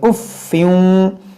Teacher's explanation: फा मुशद्दद है, इसको 2 बार पढ़ेंगे